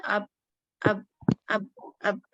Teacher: pressure ہمارا یہاں ہونٹوں کے بھی بیچ میں ہوتا ہے